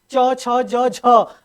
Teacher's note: च में जो है जीभ को पूरा तालू में चिपकाना पड़ता है और तब जाके बोलना पड़ता है, और चिपकाने पर चिपकाते हुए जो है इसमें क्या होती है, एनर्जी ज्यादा खर्च होती है। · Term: स्पर्श संघर्षी